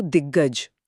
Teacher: और ग एक घोष वर्ण है कंपन के साथ। जब दिक का अघोष क गज के घोष ग से मिलता है तो बोलने की आसानी के लिए हमारा मुंह क को भी घोष यानी ग में बदल देता है।